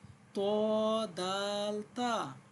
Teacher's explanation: সামনের উপরের দুই দাঁতের গোড়ার সঙ্গে লাগিয়ে তিনটি হরফ উচ্চারিত হয়